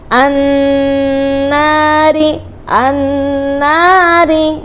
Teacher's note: hati-hati roknya rok tarkik karena roknya harokatnya kasroh